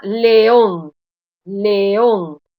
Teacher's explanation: La sílaba tónica está en última posición, es una palabra melocotón, una palabra aguda, y lleva tilde porque termina en N.